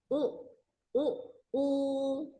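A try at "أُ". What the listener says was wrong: Nah, U-nya tenggelam. Tidak. Yo, keluar. U, U, U, U.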